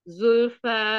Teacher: Zulfa jangan ada Hamzah belakang sayang ya